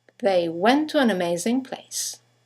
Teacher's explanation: two words one ending with a t the next one starting with the T they run into each other · you have the semi-vowel W that connects the vowels to and an to each other.